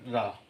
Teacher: प्रकंपित और लुंठित व्यंजन होता है सिर्फ एक, ओनली रा।